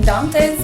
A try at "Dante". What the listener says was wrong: Dante, but you have an accent. That's fine. But it's Dante with an A.